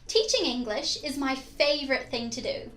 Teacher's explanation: did you notice how i said teaching english a little bit louder than i said is my teaching english is a stressed part of the sentence and i